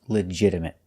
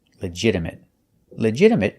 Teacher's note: the t is pronounced with a fast D sound not legitimate but legit legitimate and a stop T at the